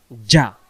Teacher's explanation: জিম অক্ষর জিহ্বার মাঝখান থেকে শক্ত করে পড়তে হয়